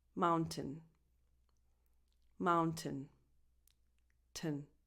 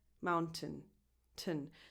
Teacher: You just go directly from the T to the N.